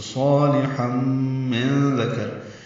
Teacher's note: ومن عمل، اب صالحا ہے، صاد پر ہے، الف مدہ ہے، 2 حرکات لمبا ہے، لام باریک ہے. تنوین کے بعد میم آنے کی وجہ سے ہم، یہ ادغام مع الغنہ ہے